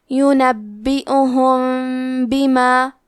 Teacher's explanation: ہم میم ساکن کو چھپاتے ہوئے اور غنہ کے ساتھ یہ حکم کو ادا کریں گے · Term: الاخفاء الشفوی